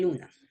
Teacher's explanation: El aire pasa por los lados de la lengua mientras el centro esté bloqueado. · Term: laterales